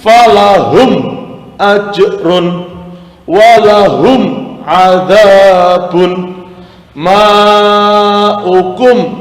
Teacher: Zoya chord jadi ketika mementingkan huruf mim maka BBnya tertutup karena dengan menutup mulut atau bibir maka suara mim akan terdengar dengan terang dan jelas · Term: mim sukun